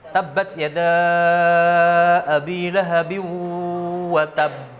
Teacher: Jadi masih watab. Mengatupnya bibir agak lama.